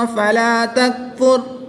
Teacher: را وقف کی حالت میں پر یعنی موٹی پڑھی جائے گی